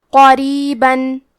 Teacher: کلمت قریباً میں حرف القاف کو موٹی آواز میں پڑھیں گے. را کے نیچے زیر ہے، یہاں را کا حکم ہے ترقیق، تو ہمیں حرف الرا کو پتلی آواز میں پڑھنا ہے